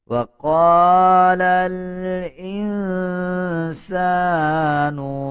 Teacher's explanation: سین کے اوپر دیکھیں زبر ہے اور زبر کے بعد الف آ رہا ہے، 1 سیکنڈ لمبا کر کے پڑھا جائے گا